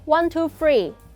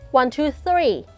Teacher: You should avoid the TH sound. Use the F sound instead.